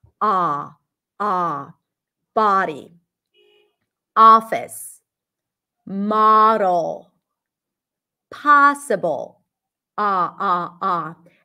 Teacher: So the tongue pulls back. It feels like a rounded sound because the sound resonates in the back, but the lips are not rounded. Ah, ah, body, office, model, possible, ah, ah, ah.